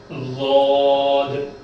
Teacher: ضاد ضاد کو بھی آ کر موٹا پڑھیں گے، اور ہمارا جیب کا کنارہ ہے نا، جیب کا کنارہ آ کر ہمارا داڑوں میں لگنا ہے، ہمارے داڑوں میں لگنا ہے۔